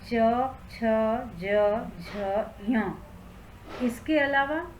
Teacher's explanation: तालु से उच्चारण होता है च वर्ग का। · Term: तालव्य